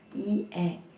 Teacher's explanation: vokal depan yang dihasilkan saat posisi lidah berada di bagian depan